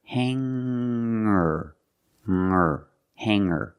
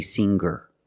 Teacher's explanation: when I change these words with e r i don't pronounce the G sound it's just the nasal M linked together with the r together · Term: no G sound